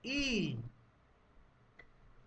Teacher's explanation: बोल के देखो, ई। आपकी जीभ का जो टॉप पॉइंट है वो जाकर तालू पर लगेगा, पैलेट पर लगेगा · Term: अग्रस्वर